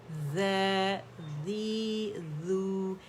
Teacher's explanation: ذال باریک ہے تو اس میں بزنگ ساؤنڈ نہیں آنی چاہیے